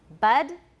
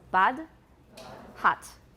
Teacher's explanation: In American, it's close to a schwa.